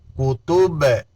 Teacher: کاف پیش کو، تا پیش تو، کوتو، با دو پیش بن، کتبن، کتب، با میں بھی قلقلہ ہے